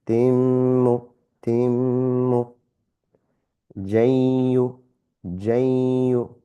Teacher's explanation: Ghunna, slight nasal sound and slight hold.